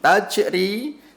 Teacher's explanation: Tajri, jim sukun di tengah kata, qalqalah sughra. Cara bacanya kudu dipantulkan. Nah, kudu dipantulkan dan pantulannya mengalir kecil karena qalqalah ini qalqalah sughra.